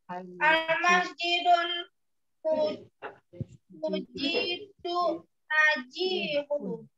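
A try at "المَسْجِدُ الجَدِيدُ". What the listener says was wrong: Panjang pendeknya masih perlu dilatih.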